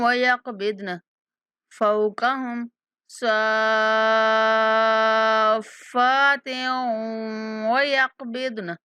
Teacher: تا کی تنوین کو واو کے ساتھ ملاتے ہوئے غنہ کے ساتھ ادا کریں گے۔